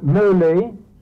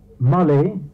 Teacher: en même temps que la diphtongue se transforme en une voyelle simple, il y a un redoublement consonantique, un redoublement de consonance, et c'est cette consonance qui apparaît dans Ulysse sous la forme de Molly.